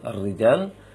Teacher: ro kasrah yang bertasydid, maka langsung tipis dia